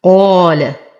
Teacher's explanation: نفخم القاف بأعلى درجات التفخيم فهي مفتوحة وبعدها ألف. نرقق اللام ونخلصها من تفخيم القاف.